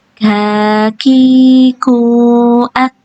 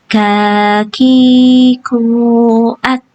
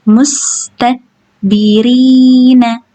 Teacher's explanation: Udah keluarkan aja anginnya, bukan dikeluarkan suaranya, bukan ak gitu. Jangan sampai keluar suara nya atau suara pantulannya ya, yang hanya keluar itu anginnya ya.